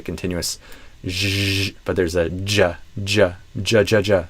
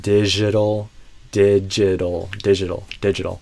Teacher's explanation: Not j, but j. So there's a stop and an explosion, not just a continuous j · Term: J sound